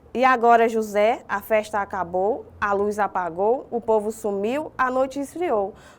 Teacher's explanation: Nós percebemos que essa repetição do som do ó e do u, que são ali as nossas vogais, por isso que é chamado de assonância